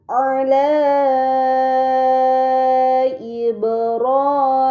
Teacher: Kemudian pada kata ala Ibrahim, terdapat mad yang bertemu dengan hamzah bukan dalam satu kata. Ini dinamakan mad munfasil. Maka harus dibaca panjang selama 4 atau 5 harokat